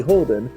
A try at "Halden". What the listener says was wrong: It's pronounced Halden, thank you very much. It is an A, not an O.